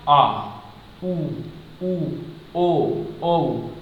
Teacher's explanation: उच्चारण में जीभ का पार्श्व भाग काम करता है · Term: पार्श्व स्वर